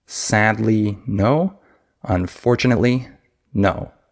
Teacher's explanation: you can hear how fast and how short those syllables are on the word unfortunately, right? So that's an example of what a stress-timed language is.